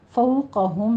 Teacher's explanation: فو میں واؤلین ہے اور قوف کو پر پڑھنا ہے